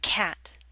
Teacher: Your mouth should be more open for the A in cat.